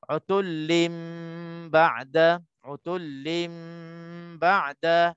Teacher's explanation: tanwin pada lam ini bertemu dengan huruf ba pada ba'da, maka hukumnya iqlab dengung dua harakah.